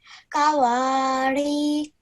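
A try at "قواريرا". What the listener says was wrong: Remember the ra at the end, okay? So kawarid.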